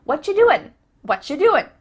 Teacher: the end of the word doing, that G, also gets cut out.